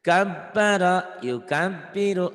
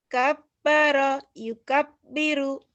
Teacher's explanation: Kabaro jadi nyamber ke ba tapi seperti ditahan sedikit.